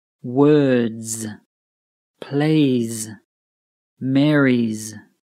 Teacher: The S sounds like a Z or Z, which is a buzzing Z sound.